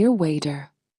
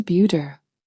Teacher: In American English, whenever the letter T comes between two vowel sounds, it softens into a very light and quick D sound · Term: flap T